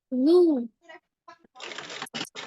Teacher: زو نرمی سے ادا کرے بنا سیٹے کے